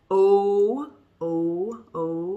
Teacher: loose okay and then i have oh oh oh in the in the back in the middle my lips are round